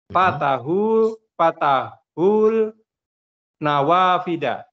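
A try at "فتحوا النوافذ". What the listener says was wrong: Naam, fatahun nawafida. Alif lam syamsiyah, tidak dibaca lamnya. Fatahun nawafida.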